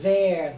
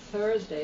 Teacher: There has like a vibrating there. But Thursday is softer.